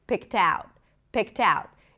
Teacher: we connect the t also to the next word because it starts with a vowel